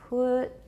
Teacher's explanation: Pretty much all we're hearing is a vowel turning into silence.